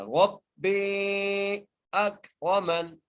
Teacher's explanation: را کو موٹا کر کے پڑھنا ہے، اور میم کو نون سے ملانا ہے کیونکہ نون کو ہم وقف کی صورت میں ساکن کر رہے ہیں. · را کو موٹا کر کے پڑھنا ہے، را کو با سے مضبوطی سے ملانا ہے، با کو تین الف دار کھینچ کے پڑھنا ہے.